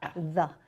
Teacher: As a syllable, the onset is a TH. where you stick out your tongue. And the E is like a schwa sound that goes the.